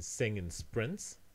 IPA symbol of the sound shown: ɪ